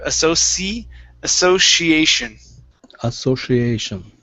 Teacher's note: now when we say this word the c changes to an sh